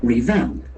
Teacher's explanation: Accent falls in the second syllable. There are 2 syllables.